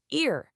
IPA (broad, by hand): ɪə